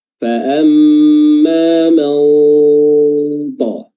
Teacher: Ya, lidah kita diletakkan pada makhraj huruf ta bersamaan dengan nun sukun tersebut, ya, sehingga nun sukunnya tidak terbaca dengan jelas namun terbaca dengan samar. Fa'amma man ta, ya, karena huruf ta ini merupakan huruf isti'la, huruf yang tebal, maka nun sukunnya juga atau ikhfa'nya juga harus tebal.